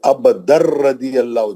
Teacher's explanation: بلا غنہ کے دو ہی حرف تھے، لام اور را، ہے نا. ہم اس میں نون کا آواز نہیں آتا، ہم ڈائریکٹ لام اور را میں چلے جاتے ہیں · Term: ادغام بلا غنہ